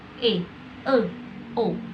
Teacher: vokal madya, vokal yang dibentuk dengan menempatkan posisi lidah di tengah mulut